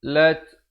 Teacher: ada hamasnya tu, bunyi angin itu